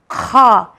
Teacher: खा ये भी हुर्फ हल्की है, मगर ये हलक के फर्स्ट पार्ट से निकलता है